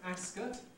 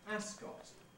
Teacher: place names like this this name racecourse is traditionally called ascot increasingly one hears people pronouncing it ascot with a strong vowel in the second syllable